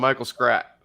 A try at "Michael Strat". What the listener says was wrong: Oh, Michael Strat. I think you said strap. It sounded like you said strap.